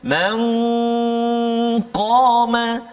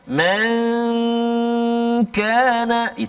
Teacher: huruf qaf tebal, huruf kaf tak tebal. Jangan dua-dua sama bunyi dia, tak kan.